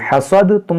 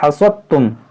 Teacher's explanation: دال کی آواز یہاں پر نہیں آئے گی